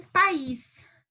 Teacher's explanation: o A como vogal, o I como semivogal, e a gente tem a mesma questão, tá? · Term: encontro vocálico decrescente